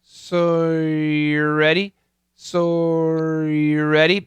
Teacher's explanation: believe it or not I am saying R but it just kind of disappears um the r sound is there in my head I'm saying